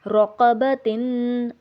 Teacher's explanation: را زبر را، قاف زبر قا، رقا، با زبر با، رقبہ، تا دو زیر تن، رقبتن۔ اب یہاں پر ہم نے تا پر غنہ کیا ہے، کیونکہ تا دو زیر یعنی کہ جو تنوین ہے اس کے بعد سین آ رہا ہے جو کہ حروف حلقی میں سے نہیں ہے، رقبتن، تو اس لیے ہم اس پر غنہ کریں گے۔